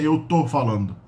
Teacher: remember that the first syllable is dropped, so people don't say eu estou, that's too formal